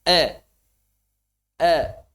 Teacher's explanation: Dhammah bercampur dengan kasroh. Ada e dalam bahasa Arab majreha. Ada antara e dan a. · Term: imalah